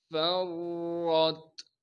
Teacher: تشدید ہونے کی وجہ سے فا کو را سے ملا رہے ہیں۔ را پر زبر ہونے کی وجہ سے را کو موٹا کر کے پڑھیں گے · فرت، فا کو باریک کر کے پڑھیں گے اور فا کو آگے را سے ملائیں گے جس پر تشدید ہے۔ تشدید ہونے کی وجہ سے فا کو را سے ملا رہے ہیں۔